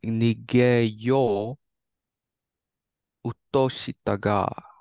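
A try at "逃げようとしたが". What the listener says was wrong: So, something that I've noticed you have a little bit of issue is with long vowels. Long vowels. So, this right here is not mo-u. You don't need to put a pause in between these two sounds. This is one long sound. This is mo. This right here, this is not yo-u. This is yo. So this right here is not nige yo-u.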